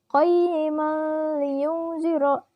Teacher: Karena huruf mim berharakat fathah tanwin bertemu huruf lam tasydid. Dibacanya lebur tanpa dengung dan bunyi tanwinnya pun hilang. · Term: idgham bila gunnah